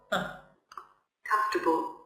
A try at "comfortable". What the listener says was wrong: Comfortable. R is silent. So here, no R. So it's comfortable. Not comfortable, no. Comfortable.